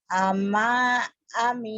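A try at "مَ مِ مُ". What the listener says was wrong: Pendek. Pendek. Pendek. Pendek. Ama, ami, amu.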